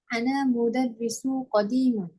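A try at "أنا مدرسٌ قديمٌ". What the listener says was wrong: Ana Nah, mudarrisun khabar tanwin ya.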